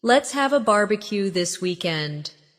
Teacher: stress barbecue and weekend. So, it sounds lively and friendly